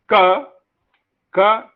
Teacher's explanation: Ka is a voiceless, velar, plosive.